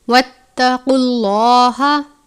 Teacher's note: موٹے والا قاف ہے، حروف مستعلیہ میں سے، ہمیشہ اور ہر حالت میں پر پڑھتے ہیں